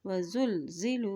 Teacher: वद्दर्राउ वज़ुलज़िलू, वाव ज़बर वा, ज़ा पेश लाम ज़ुल, लाम के ऊपर जज़म है, ज़ा की पेश को लाम के साथ मिलाएं